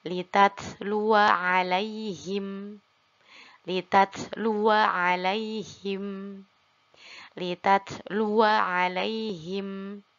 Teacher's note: tetap waw di sini tetap dibaca pendek karena alifnya tidak difungsikan